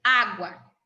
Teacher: Veja que o U tem entonação mais fraca, é uma semivogal, e o A tem entonação mais forte, é uma vogal. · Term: ditongo